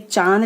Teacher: तो ये चांद लिखा है ना, चांद पे चंद्रबिंदु, और इसको बोलते समय नाक और मुंह दोनों से हवा निकलती है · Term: अनुनासिक